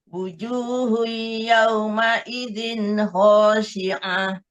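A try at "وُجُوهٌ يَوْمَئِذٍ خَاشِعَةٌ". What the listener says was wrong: Kho-nya agak dalam sedikit, Bu. Jangan huruf H yang nyama jadi kho. Jangan khashi'ah. Khashi'ah bukan. Khashi'ah.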